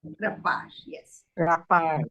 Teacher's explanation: You stress on the second syllable.